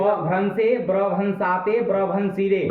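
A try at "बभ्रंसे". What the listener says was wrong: ब्र क्यों बोल रहे हो? गलत। ब्र उसमें नहीं ना कर देना है, ब रहेगा ना। अलादि शेष से सब चला गया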